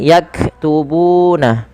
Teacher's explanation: panjangkan bu sepanjang 2 harakat karena ia mad tabi'i